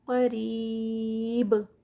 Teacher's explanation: را جو ہے وہ کسرہ کے ساتھ ہے تو اس کو لائٹ ادا کیا جائے گا